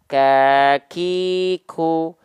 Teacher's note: lidah yang dia menyentuh ke langit-langit perbatasan lunak dan keras mengakibatkan Kaf itu ada sifat hamsnya keluar perecikan nafasnya